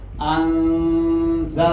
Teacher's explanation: یہ جو ان کی آواز ہے یہ نون اس کے مخرج میں چھپا کر ادا کیا جا رہا ہے, اس کو اخفاء کہتے ہیں.